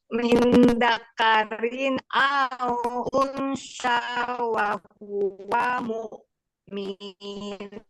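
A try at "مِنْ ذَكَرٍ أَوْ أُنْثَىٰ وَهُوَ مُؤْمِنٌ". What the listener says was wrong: Tidak boleh minnya dipanjangin. Wa huwa mu'min. ngomong-ngomong, huruf sa-nya belum lulus.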